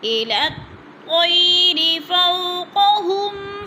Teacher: أَوَلَمْ يَرَوْا إِلَى الطَّيْرِ فَوْقَهُمْ، إِلَى الطَّيْرِ فَوْقَهُمْ، إِلَى الطَّيْرِ، یہ لین لمبا بھی نہیں کریں گے، جھٹکا بھی نہیں دیں گے